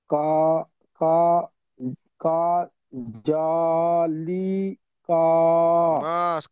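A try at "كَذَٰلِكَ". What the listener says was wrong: কা টান হবে না। কাজা লিকা।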